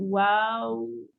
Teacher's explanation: Yang waw 2 bibir yang dimuncungkan.